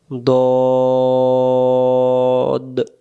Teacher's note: উচ্চারণ দদ অক্ষর মারির দাঁতের গোড়া থেকে